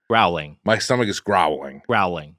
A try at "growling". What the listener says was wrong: With the W. Throw the W in there.